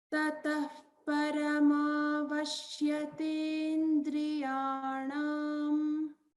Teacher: The a kara here for ta should be pronounced long.